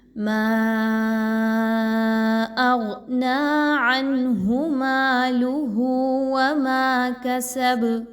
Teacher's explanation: غین جو ہے یہ حروف مستعلیہ میں سے، اس کو پر پڑھا جائے گا، موٹا حرف ہے